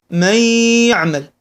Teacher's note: نجد ان النون دخلت في الياء هذا يسمى الادغام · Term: الإدغام